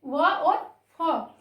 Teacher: दंतोष्ठ अर्थात जो दांत और होंठ दोनों से बोले जाते हैं उन्हें दंतोष्ठ व्यंजन कहते हैं।